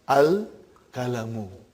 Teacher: instead of ending in bun it became bu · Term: tanween